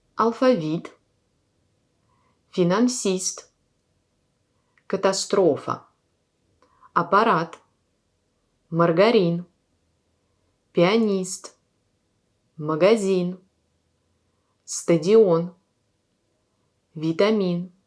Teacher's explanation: Et la quatrième colonne, il y a aussi 3 syllabes, mais dans ce cas-là, l'accent tombe sur la troisième syllabe, sur la dernière voyelle dans un mot.